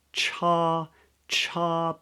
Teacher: everything is silent at the beginning because it's the tongue is blocking the exit of the mouth and then it releases this a little bit a little bit of air